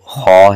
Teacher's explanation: اس کو قدرے موٹا بھی کریں گے اور حلق کے گلے کے شروع سے اس حرف کو ادا کیا جائے گا